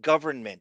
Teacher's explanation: Comfortable is how you're supposed to say like government. There's an N in there, but we don't say the N. We speed over it.